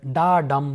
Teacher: the line has an unstressed syllable followed by a stressed syllable